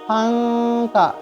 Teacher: جب آپ پھنکا کہیں گے تو آپ کی زبان کی نوک پیچھے کو آپ رک رہی ہے، یعنی اوپر ٹچ نہیں ہو رہی. اس وقت اکفا آپ کا صحیح ہوگا.